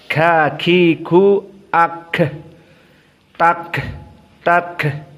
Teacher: tambbiih di sini Kaf dalam keadaan sukun takdiib dalam keadaan hams maka kafnya harus dikeluarkan nafasnya